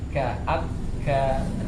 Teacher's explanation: kalau tasdid tidak perlu kita keluarin anginnya pas tasdidnya, pas ka-nya baru angin keluar lagi